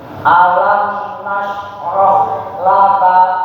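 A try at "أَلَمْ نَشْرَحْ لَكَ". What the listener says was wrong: Masya Allah, barakallahu fiik. Ya, cukup ya seperti itu.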